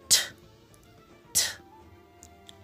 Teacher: It is produced actually when tip of the tongue is in contact with the alveolar ridge.